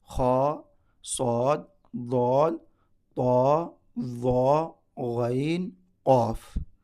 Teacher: اس میں 7 حروف ایسے ہیں جو ہمیشہ پر پڑھنا ہے، ہیوی پڑھنا ہے، موٹا پڑھنا ہے